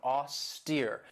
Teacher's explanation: this has 2 syllables, and the stress is on that second syllable with that long E sound